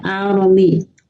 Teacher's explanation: Karena didahului harokat fathah, maka ya rohnya itu menjadi tebal ya. Al-romi. Ya, jadi cara membaca roh itu ada tarqiq, ada tafhim. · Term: roh tafhim